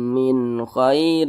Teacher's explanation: maka cara membacanya itu dibaca jelas dan tidak berdengung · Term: izhar halqi